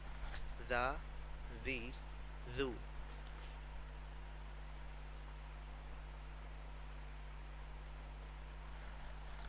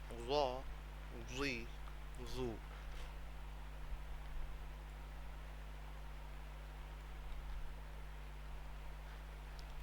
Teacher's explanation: ہم اپنی زبان کا جو کنارہ ہے، زبان کی نوک کو اپنے اوپر والے دانتوں کی کنارے کے ساتھ ٹچ کر کے جب پڑھیں گے تو سیٹی کی آواز پیدا نہیں ہوگی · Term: ذال